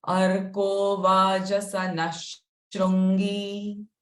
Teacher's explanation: Vajasana, the Visarga sound is sh.